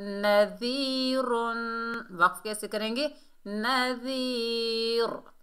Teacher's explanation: کے اوپر دو پیش، رن، آگے دیکھیے گول سرکل آ گیا، وقف کی حالت میں را کے دو پیش ختم ہو جائیں گے، را ساکن ہوگی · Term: وقف بالاسکان